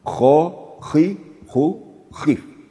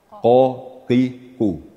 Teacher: yang kho itu sedikit ada getaran ko. Tetapi kalau qof itu bersih qof.